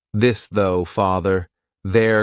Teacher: you're going to put your tongue in between your teeth and your vocal cords are going to vibrate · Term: voiced th